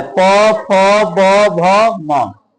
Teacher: इसमें पूरा योगदान ओष्ठ का है